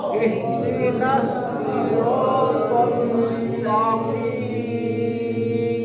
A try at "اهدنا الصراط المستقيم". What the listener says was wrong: মুস্তা তা কিন্তু এর মধ্যে নাই এজন্য সিরাতাল এই দুইটা মোটা হবে ইহদিনাস সিরাতাল মুস্তাকিম মুস্তা একবার পাতলা করেন তা তা মুস্তা তো মোটা দেব না ইহদিনাস সিরাতাল মুস্তাকিম